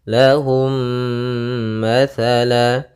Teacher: dia m yang tidak berharakat kita anggap mim mati lahum sehingga langsung dimasukkan ke mim yang kedua dan ditahan suara gunahnya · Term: Idam Mimi